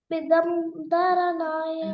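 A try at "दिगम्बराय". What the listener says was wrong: Not Bigam. Digam. Digambaraya.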